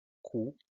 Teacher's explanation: si pronunciamos Q, van a sentir que el contacto, el punto de articulación es un poquito más atrás